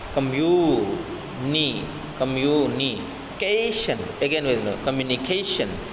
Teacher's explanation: here ca is uh pronounced somewhat larger stronger and put some stress